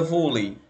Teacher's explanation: eu tenho aqui uma vogal, no caso E, que é a maior, e o I é uma semivogal. Da maior para menor, eu tenho um ditongo decrescente.